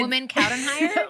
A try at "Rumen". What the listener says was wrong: Rumen. It's with an R. Rumen. It's very hard for the Americans to pronounce it, actually.